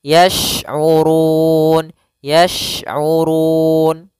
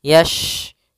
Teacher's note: Hati-hati jangan terbaca dengan huruf sin. Ya, shin makhrajnya adalah tengah lidah kita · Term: huruf shin